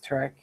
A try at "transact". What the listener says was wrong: You're putting an extra T here. It's transact. Transact.